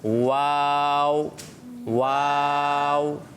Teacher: ہونٹوں کی مکمل گولائی ہوگی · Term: حرف واو